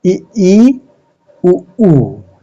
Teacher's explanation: उच्चारण करते समय मुंह लगभग बंद सा रहता है